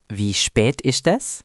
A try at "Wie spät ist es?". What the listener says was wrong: Almost perfect. Just a little more emphasis on the sp sound in spät.